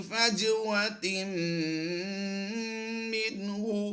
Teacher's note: تا میم دو زیر تم کی آواز دیں گے